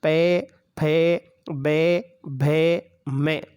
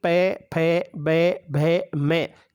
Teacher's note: इन वर्णों का जब हम उच्चारण करते हैं तो हमारी दोनों होंठ आपस में चिपक जाते हैं जब तक हमारे होटल नहीं चिपकेंगे तब तक इन वर्णों का